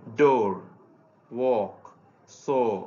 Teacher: এরপরের ভাওয়েল সাউন্ডটি হচ্ছে ও সাউন্ড। আমাদের ওর চেয়ে এই সাউন্ডটা একটু দীর্ঘায়িত হবে